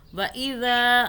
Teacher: وَإِذَا ذال کو سافٹ پڑھیں، زبان کو باہر نکال کے ہلکا سا ادا کریں تو یہ ہو جائے گا. ذا کو کھینچا کیونکہ آگے الف آ رہا ہے